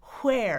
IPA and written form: ʰwɛər (where)